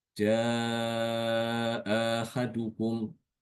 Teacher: Imam Kumpul ada dua cara ya, dengan tadi dengan tasil, yang kedua dengan ibdal, mengganti hamzah kedua dengan alif